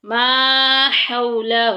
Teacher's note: فَلَمَّا أَضَاءَتْ مَا حَوْلَهُ، ماں میں الف مدہ کا قاعدہ جاری ہو رہا ہے، الف اور پیچھے زبر آ گئی ہے۔ ہو میں لین ہے، نرمی سے معروف پڑھیں گے، بغیر کھینچے بغیر جھٹکا دیے